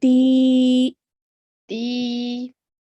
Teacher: we're going to stretch the ti sound for 2 counts as well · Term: ya madya